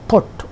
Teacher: A vowel in put, O sound, is shorter than that in school, which is U sound.